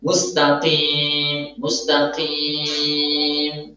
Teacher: terkadang dia menyertakan gunnah pada ya-nya supaya terdengar enak suaranya.